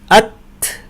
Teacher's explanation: আমি প্রথমে জিহ্বাকে শক্ত হয়ে মাখরাজে লাগিয়েছি এবং তারপর একটু করে বাতাস ছেড়ে দিয়েছি। আত বলার পর একটু বাতাস ছেড়ে দিয়ে বললাম আত। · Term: হামস